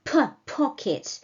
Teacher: consonant comes with much aspiration